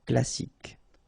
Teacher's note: you don't insist on the final E, so you get K as the last sound